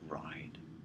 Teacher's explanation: modern English gets rid of the nasal altogether and changes the vowel to ride